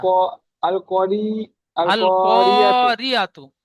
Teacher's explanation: আল করি বলে র টান দিচ্ছেন, র হারাকাত টান হবে না, জি, জি। কটি টান হবে, আলিফ আল মাদ্দা। · আলিফ মাদ্দা এক আলিফ পরিমাণ টান দিয়ে পড়তে হয়